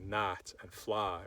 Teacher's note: you might take all of the sounds I in English like a knight or fly and replace them with the monophthong ah